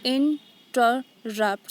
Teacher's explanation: So here in and ter are unstressed and rupt is stressed. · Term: anapestic pattern